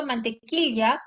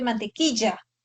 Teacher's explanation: en lugar de que se perciba mantequilla con la lateral palatal, se percibe mantequilla con la fricativa palatal. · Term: yeísmo